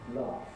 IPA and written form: lɑːft (laughed)